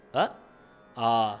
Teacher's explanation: ரஸ்வத்துக்கு வந்து ஒரு மாத்திரை தீர்க்கத்துக்கு வந்து ரெண்டு மாத்திரைகள் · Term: ஹரஸ்வம் தீர்க்கம்